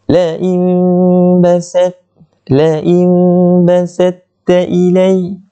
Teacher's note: Kita tengok pada nun dan nun yang mati itu bertemu dengan ba, padanya ada mim, yang mana mim kecil kaki dia jatuh ke bawah, itu menandakan ianya tanda iqlab. Bila iqlab, kita dengungkan sama-sama di antara hampir merapatkan bibir ini.